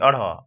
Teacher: जीभ जो है ऊपर मूर्धा से टच करते हुए झटके से क्या होता है? नीचे गिर जाता है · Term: उच्छिप्त वर्ण